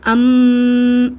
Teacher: அந்த குன்னா தன்மை வந்து நம்மளுக்கு அந்த மூக்கு துவாரம் வழியாக வெளியேறுவதை நம்மளால ஃபீல் பண்ண முடியும்